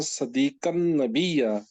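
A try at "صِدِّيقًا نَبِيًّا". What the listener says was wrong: یہ سواد کے نیچے زیر ہے،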